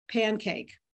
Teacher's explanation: the N in pancake assimilates the velar place of articulation of the following K